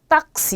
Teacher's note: 실로포노 이렇게요. 자, 그런데 단어 중간에 올 경우에는 이 앞에 오는 아의 모음에다가 기역 받침을 넣어주셔야 돼요. 그래서 요거 읽으실 때 따시가 아니라 딱시 이렇게 읽어주셔야 돼요.